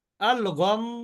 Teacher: মিমের উপরে তাসদি থাকলে কিন্তু ওয়াজিব গুন্না তাহলে এখানে গুন্না করে শেষ করতে হবে